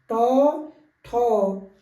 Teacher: ट वर्ग के व्यंजन जो है मूर्धा से उनकी साउंड निकलती है